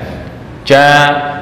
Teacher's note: Jim itu makhrajnya di tengah lidah ya ja bukan ja ja C sebentar saya Gambarkan makhraj ya